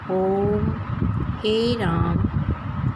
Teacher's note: जिस स्वर के उच्चारण में ह्रस्व स्वर से तिगुना समय, तिगुना मतलब 3 गुना समय लगता है, उसे प्लुप्त स्वर कहते हैं।